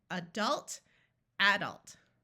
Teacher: some people that pronounce it adult where the first syllable is accented and instead of having a schah sound it's a short a